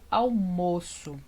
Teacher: eu falo almoço com esse ó fechadinho né quase que parecendo um acento circunflexo